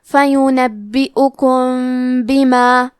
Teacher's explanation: کلمت بیما، یہاں حکم ہے اخفاء شفوی، تو ہم میم ساکن کو چھپاتے ہوئے اور غنہ کے ساتھ یہ حکم کو ادا کریں گے